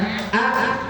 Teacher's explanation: mim bertasdid juga masuk kepada alkasyum atau rongga hidung